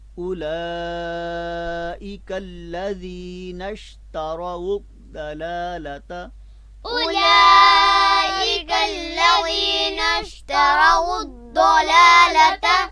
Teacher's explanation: لفظ اولا میں لام کو اور زیادہ لمبا کریں، یعنی 5 الف کے برابر اس کی آواز ہونی چاہیے